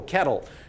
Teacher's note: there basically is a different type of l the l has essentially become a vowel realistically there's like a little bitty vowel before it but it's